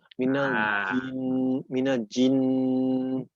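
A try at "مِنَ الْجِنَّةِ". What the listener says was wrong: Jangan terlalu ci ya. Jangan terlalu ci, tapi ji. Minal jinnati.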